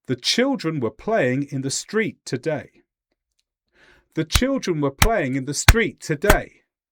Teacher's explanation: Notice that there is an equal amount of time between these stressed syllables. And it didn't matter how many sounds got between them. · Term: English rhythm